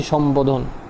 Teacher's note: ম এর সাথে যদি ব যুক্ত থাকে তখন তোমার বর উচ্চারণটা বহাল থাকে